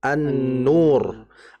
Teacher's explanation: lamnya tidak terbaca karena langsung dimasukkan ke huruf nun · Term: lam mati